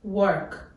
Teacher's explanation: Здесь мы слышим, как в Нигерии произносится вот этот вот rolling R sound.